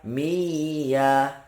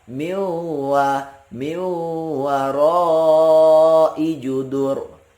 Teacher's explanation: Nah, contoh kalau kita nun sukun bertemu dengan huruf ya, akan dibaca miya, dengung